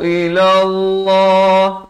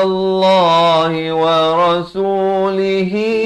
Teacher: Di sini dipanjangkan 4 atau 5 harakat. Wa idza du'u ila Allah. Jalalah di sini dibaca tebal.